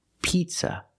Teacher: We cannot use the short I sound like this is. We have to use the long E sound like green beans.